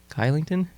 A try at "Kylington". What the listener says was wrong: Starts with a K, but it's Shillington.